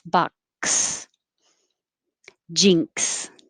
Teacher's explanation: your tongue stops the airflow and then releases it with an s